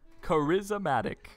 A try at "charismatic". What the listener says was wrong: No, you said charismatic. There was no A in that word.